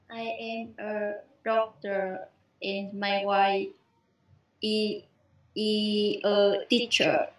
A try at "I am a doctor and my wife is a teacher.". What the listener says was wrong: Is. Thêm âm Z vào. Đọc lại anh xem nào.